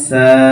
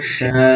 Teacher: সিন হচ্ছে পাতলা করে আর শিন হচ্ছে মোটা করে বাতাস বেরোবে